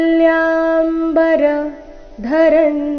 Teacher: ದಿವ್ಯ ದಿ ಮೇಲೆ ಆಘಾತ ಮ ಮತ್ತೆ ಯ ಇವೆರಡು ಅಕ್ಷರಗಳ ಮೇಲೆ ಕೂಡ ಆಘಾತ ಬರಬೇಕು